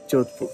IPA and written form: ˈd͡ʒoːd̪ʱpʊr (Jodhpur)